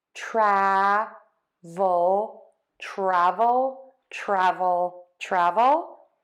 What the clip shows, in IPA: ˈtrævəl